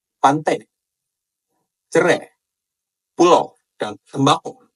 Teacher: au dalam bahasa Betawi ini diucapkan dengan vokal e dan o kayak e gitu dan o.